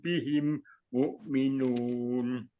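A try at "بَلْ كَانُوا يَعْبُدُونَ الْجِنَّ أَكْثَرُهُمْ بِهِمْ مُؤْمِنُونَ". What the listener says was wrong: bihim mu'minun. Himnya panjangin, Pak.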